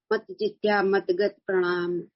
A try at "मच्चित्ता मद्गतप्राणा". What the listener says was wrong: वो प्रणाम कहाँ लिखा है? मच्चित्ता मदगत प्राणा।